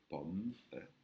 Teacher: c'est le P avec de l'air qui sort avec un H inspiré pour faire pour sortir et là pareil pour le O avec un accent, c'est pas un O, c'est un A.